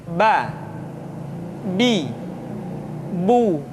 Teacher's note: Yang kedua, huruf Ba. Huruf Ba dikeluarkan dengan cara merapatkan kedua bibir kita.